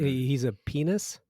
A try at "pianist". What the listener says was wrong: He's a pianist. Pianist with a T. Pianist.